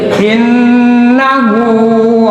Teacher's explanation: nunnya ada tasdid, harus digunakan, ditahan dan mendengung